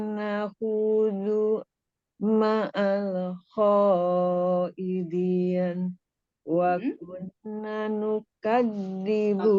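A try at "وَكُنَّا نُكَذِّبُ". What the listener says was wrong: Kunna, naknya panjangkan. Dua harokat.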